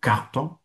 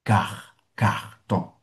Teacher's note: la manière dont j'ai réalisé carton, c'est avec le R uvulaire